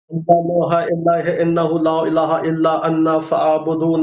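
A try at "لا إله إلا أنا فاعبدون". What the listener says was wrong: انا نہیں ہے بھائی، انا نہیں ہے، انا نہیں ہے، انا الا انا، انا نہیں ہے الا انا فاعبدون. انا، انا غلط ہے، انا.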